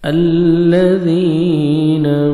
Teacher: ज़ाल को नरमी से अदा करेंगे या मद 1 सेकंड आपने ज़ाल को खींचना है।